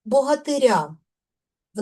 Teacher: В називному відмінку наголос падає на суфікс Ир. В родовому відмінку наголос падає на закінчення. Тобто наголос змінює своє місце.